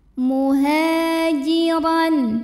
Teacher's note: karena ada Alif yang didahului baris fathah maka huruf ha panjangkan dua harakat